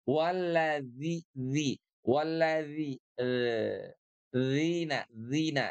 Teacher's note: huruf dzal itu seperti digigit ujung lidah kita